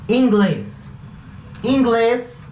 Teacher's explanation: A sílaba tônica é a última e termina com S. Então vai levar acento na vogal. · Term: palavra aguda